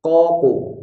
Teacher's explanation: Lalu huruf qaf memiliki bunyi qalqalah. Bunyi qalqalahnya qaf ini adalah bunyi qalqalah yang ada atau mengandung bunyi o, tidak mengandung bunyi u.